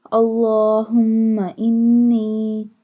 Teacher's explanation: stretch the lam because standing fatha is on the lam